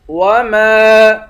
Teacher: وما، میم کے بعد الف ہے، الف حروف مدہ ہے، اس پر مد ہے، اس مد کو تین الف کی مقدار کھینچیں گے،